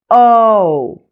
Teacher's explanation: Notice how it glides between an O and a U sound. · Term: long O